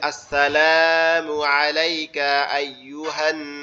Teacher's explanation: এখানে টান হবে না, কারণ এখানে লামের পরে কি আছে, তাসদিদ আছে, এই হা নুনকে গিয়ে ধরবে, এখানে কোনো টান হবে না।